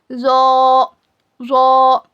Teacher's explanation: ज़ो को पूरा मुंह भर के पढ़ना, मोटा पढ़ेंगे.